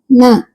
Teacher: நாவின் நுனி மேல்வாய் பல்லின் அடிப்பகுதியை தொடுவதால் நகரம் பிறக்கிறது. சரிங்களா, பல்லோட அடியை தொடும்போது நகரம் பிறக்குது.